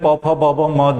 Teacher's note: जब भी बोलते हैं प फ ब भ म, दोनों ओठ आपस में लड़ने लगते हैं। इनका उच्चारण ओष्ठ से होता है, इसलिए इनको हम लोग ओष्ठ्य कहेंगे।